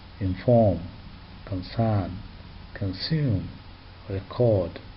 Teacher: In these four last words, the stress is not on the first syllable but on the second syllable. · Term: stress on the second syllable